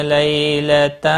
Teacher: باعی یا مدہ ہے، ایک الف کے برابر کھینچ کر پڑھیں گے، نا کو کھینچنا نہیں۔ لئی یا لین ہے، تھوڑا نرمی کے ساتھ کھینچ کر ادا کریں گے